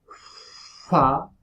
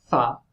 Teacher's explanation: So I will repeat the bilabial voiceless fricative, fa, and now the labiodental, fa. Okay, so for the labiodental, of course, you get your teeth, your upper teeth, on your lower lip